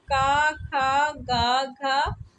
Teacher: क वर्ग की ध्वनियां कहां से उच्चारित होती हैं? कंठ से।